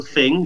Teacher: St. Lucians pronounce TH or theta as F